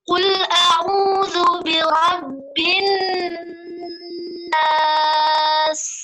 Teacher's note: huruf sinnya harus ada rokhawahnya, harus ada sofirnya. Jadi tidak boleh buru-buru.